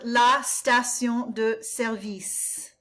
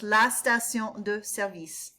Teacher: Emphasis on the second syllable with service